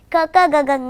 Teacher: ಹೊಟ್ಟೆಯಲ್ಲಿರುವ ಉಸಿರನ್ನ ಕಂಠದ ಆಳದಲ್ಲಿ ತಡೆ ಹಿಡಿತೀವಿ